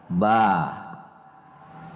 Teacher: kalau membaca ba itu gak ada ke hidungnya gak ada alhaisumnya jadi kalau kita tutup hidung kita Ba bisa ya tetap bisa